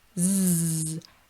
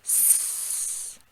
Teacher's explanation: Z is voiced with the same mouth shape that you're using for the S. If you'll notice, S, no voice, Z, same mouth, add the voice.